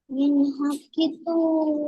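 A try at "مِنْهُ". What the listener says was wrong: মিন হা নয়, মিনহু। হা পেশ হু আছে। হু টান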